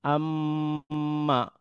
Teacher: এই যে আমরা সরাসরি আম্মা না বলে আমমা এই যে গুন্নাটা করলাম মিম এর উচ্চারণ যে স্থান রয়েছে সেখানে মিমকে ধরে রেখে কিছুক্ষণ সেটা এক হরফ উচ্চারণের দুই গুণ বা তিন গুণ সময় ধরে রেখে পুনরায় এটাকে উচ্চারণ করা এটার নাম হচ্ছে গুন্না। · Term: ওয়াজিব গুন্না